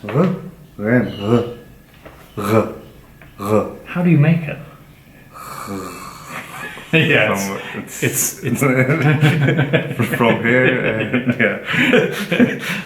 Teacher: of the this is the guttural sound and it's pronounced so it's a voice counterpart of the kh sound it's from the lower throat